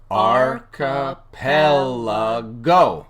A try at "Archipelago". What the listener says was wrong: You emphasize the final syllable as well, which is not how it is. Archipelago. Not archipelago.